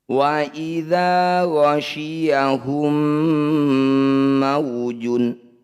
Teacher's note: Wa idza ghasyiyahum mawjun, mim sukun bertemu mim disebut bacaan idgham mimi. Bunyi mim pertama, masukkan mim kedua, dengungkan dua harokat.